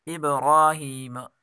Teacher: ابراہیم، اب با میں قلقلہ کریں گے، را کھڑی حرکات ہے، اس کو ایک الف کے برابر کھینچ کر پڑھیں گے، اور یہاں ہا کے نیچے کھڑی زیر، اس کو بھی ایک الف کے برابر کھینچ کر پڑھیں گے۔